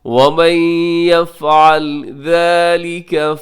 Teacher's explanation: نون ساکن کے بعد یا یرملون کے ادغام کیجیے گا غنے کے ساتھ